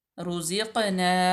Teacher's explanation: उसके बाद है रुज़िक़ना, रुज़िक़ना, रा पेश वरू, ज़ा जो है हरूफ सफ़ीरिया में से, और यहाँ पे क़ाफ कलकला भी है और मोटा भी पड़ा जाएगा, रुज़िक़ना, और अलिफ मद्दा आ जाएगी।